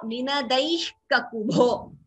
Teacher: Visarga followed by ka, it becomes jihva muliya